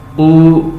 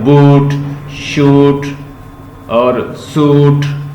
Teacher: जैसे हम बोलते हैं तो ऐसे फील होता है ये बैक ऑफ टंग से आ रही है। तो जैसे हम बूट, शूट और सूट, ये सारी साउंड जो है आपको ये देती है बैक ऑफ ऊ साउंड से।